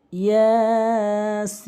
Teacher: এবং সিন অবশ্যই চার আলিফ টেনে পড়বেন